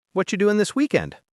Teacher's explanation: Quick, soft, and full of connection. And notice how we said whatcha instead of what are you? That's natural spoken English.